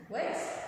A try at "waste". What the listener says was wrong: Waste. Yes, waste, not worst.